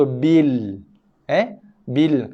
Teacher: Lam yang kedua. Lam yang pertama kita skip, kita abaikan, tidak dilafazkan. Kita baca lam yang kedua.